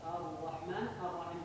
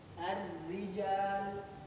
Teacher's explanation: Ra tebal naik lidah, ra tipis turun lidah biasa aja.